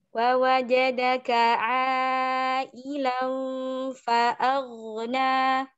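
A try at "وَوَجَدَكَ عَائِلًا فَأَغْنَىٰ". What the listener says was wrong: Ailangnya jangan ailang. Tipiskan. Jangan ailang. Ilang itu tebal. Ailan tipis.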